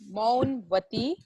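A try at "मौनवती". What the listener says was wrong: Not Maunvati. Maunavati. Maunavati. Maunavati. Maunavati. No cutting of vowels. Vowel sound.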